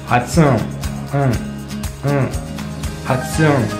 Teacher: un son qui vient en fait du fond de la gorge. Ça vient de là. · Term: le kana N